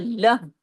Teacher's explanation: اب آگے دیکھیں لہ، ہا لام ہا زبر لہ، یہ ہا کی آواز سینے کی طرف جاتی ہے